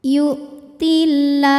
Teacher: Maka cara bacanya alif lamnya tidak kita baca atau dimasukkan langsung ke lam berikutnya. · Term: alif lam syamsiyah